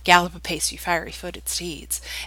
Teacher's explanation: it's ten syllables unstressed stressed unstressed stressed unstressed stressed unstressed stressed unstressed stress